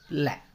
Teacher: जिन उच्चारण में जिभ्या का अगला भाग मसूड़ों को छूता है और हवा पार्श्व बोले तो आसपास से निकलती है वे पार्श्विक है। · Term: पार्श्विक व्यंजन